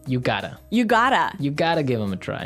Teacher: in the phrase you have got to we shorten that to say you got to